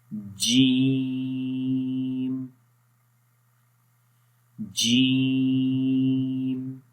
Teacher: تو جیم کا تلفظ کرنے سے پہلے، اس کی پروننسیشن سے پہلے ہم جیم کے مخرج کو جانیں گے کہ وہ کون سا ہے اور کہاں سے جیم کے آواز جو ہے وہ نکلتی ہے۔ اور جیم کا مخرج ہے زبان کا درمیان والا حصہ جب تالو کے درمیان والے حصے کے اوپر ٹچ کرتا ہے، اس کو وہ ملتے ہیں آپس میں، تو اس وقت جیم ادا ہوتا ہے۔